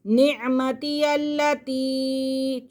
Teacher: یا بنی اسرائیل اذکروا، یا کے پر کھڑا زبر، آگے یا مدہ، اور یہاں پہ چھوٹا مد ہے کیونکہ حمزہ دوسرے کلمے میں ہے